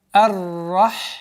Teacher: Мы начинаем с фатхи. Уходим на удвоенную букву Ра, твердое произношение буквы Ра